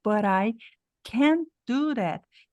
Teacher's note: esse T aqui não vai ser ouvido por causa do d que vem depois do that esse T aqui é um Stop eu posso falar